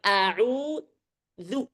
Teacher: zal itu huruf tarafi, huruf ujung lidah